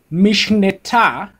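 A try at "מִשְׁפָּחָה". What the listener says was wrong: That's a pay, mishpecha.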